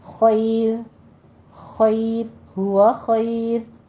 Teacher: را سے پیچھے جب یا آ جائے تو وہ را باریک ہو جاتی ہے